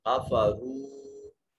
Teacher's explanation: الذین یا ساکن ہے ما قبل مقصور، یا مدہ جوف دہن سے ادا کی جائے گی۔ کفروا واو ساکن ما قبل مضموم، واو مدہ لمبا کر کے پڑھیں گے اور جوف دہن سے ادا کریں گے، اور را کے اوپر پیش ہے، ضمہ ہے، اس لیے را کو مفخم یعنی موٹا اور پر کر کے پڑھیں گے۔